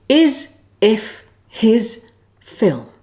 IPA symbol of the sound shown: ɪ